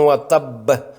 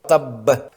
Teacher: قلقلہ کبریٰ ہے، جو مشدد حروف قلقلہ پر وقف کی صورت میں کیا جاتا ہے۔ یہ سب سے قوی اور زوردار قلقلہ ہوتا ہے۔ مثلا سورہ لہب میں تبت یدا ابی لہب وتب، آخری حرف مشدد حرف قلقلہ ہے۔